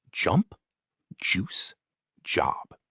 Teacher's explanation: the J in jump or juice is a voiced sound, similar to the DJ in judge.